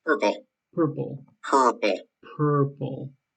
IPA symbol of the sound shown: ɝ